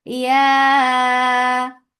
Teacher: mad muttasil wajib. Make it four counts long.